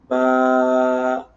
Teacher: جو ہمارے ہونٹوں کا تر حصہ ہے ہر وقت جو تر رہتا ہے اس سے یہ ادا ہوتا ہے